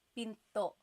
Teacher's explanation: Do you hear the glottal stop when I say pinto?